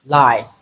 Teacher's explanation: we have the z sound and not the s. So it is the voiced form of that sound.